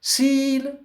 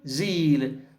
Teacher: S voiceless, Z voiced.